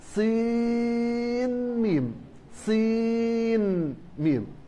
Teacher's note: يظهر نون الصين عند الميم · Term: الإظهار